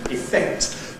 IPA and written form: ɪˈfekt (effect)